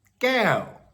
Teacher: with a long vowel and a falling tone